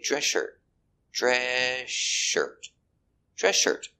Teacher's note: when you say, tennis shoes, you don't hear the S before the SH.